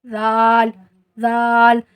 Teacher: اس کی سٹارٹنگ میں زی کی سی آواز نہیں آنی چاہیے۔ ذال را زا، اس میں جھنجھناٹ سی آواز آنی چاہیے۔